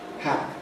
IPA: hæp…